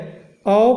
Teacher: तो औ का उच्चारण स्थान होता है कंठोष्ठ